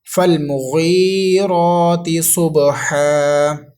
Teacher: تو وقف کی صورت میں ہا پر جب ہم نے آیت کو پڑھنے کے بعد رکنا ہے ہا پر، تو دو زبر کو الف مدہ سے بدل دینا ہے، اس لیے ایک الف تک اس دو زبر کو الف مدہ سے بدلیں گے تو ایک الف تک لمبا کر کے پڑھیں گے۔